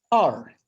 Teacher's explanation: And this is a falling tone. Falling tone, it starts at a very high pitch. Then fall to the bottom of the scale.